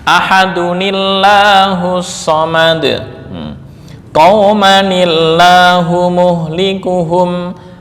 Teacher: Nah, ini diberikan harokat penolong kasroh, karena sebelumnya kasroh maka lafzul jalalah dibaca tarkik